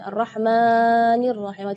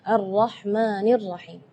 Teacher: tidak boleh lebih madnya dari dua harakat